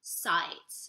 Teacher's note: we want to hang on to our vowels, which in this case, it's the ah sound